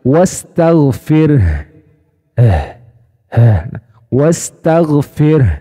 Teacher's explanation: rakhawa Itu dari sisi suaranya mengalir ya tidak tertahan berbeda dengan Hamzah Hamzah tertahan